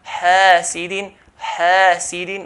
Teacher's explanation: After ha there's an alif preceded by letter as a fatha. So stretch the ha.